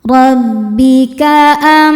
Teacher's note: roho dibaca tafhim karena berharakat fathah. Cara bacanya ditebalkan. Rbika am. Am am ada hukum izhar syafawi. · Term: tafkhim